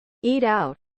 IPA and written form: ˈiːt ˌaʊt (Eat out)